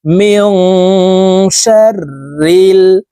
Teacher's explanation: ইফা গুন্না নুন সাকিনের পরে ইফার হরফ সিন আসছে এই কারণে এই নুন সাকিন কে নাকের ভিতরে লুকাইয়া গুন্নার সহিত পড়বো